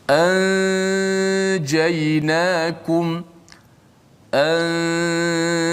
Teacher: nun itu masih kekal di gunnah pada hidung. Adapun makhrajnya disembunyikan di sisi huruf jim, bunyi begini, anjaynakum, anjaynakum.